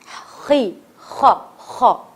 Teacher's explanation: خو میں زبان رگڑ کھا رہی ہے, زبان میں وائبریشن آ رہی ہے